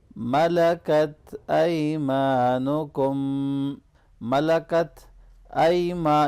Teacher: यहाँ या लीन है, इसको नरमी से मिलाएंगे,